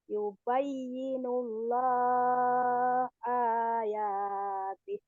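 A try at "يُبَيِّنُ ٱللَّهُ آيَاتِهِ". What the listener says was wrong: Hunya ketinggalan. Yubayyinullahu ayatih. Yubayyinullahu ayatih.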